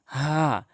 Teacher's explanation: হলকের শুরু থেকে উচ্চারণ করতে হবে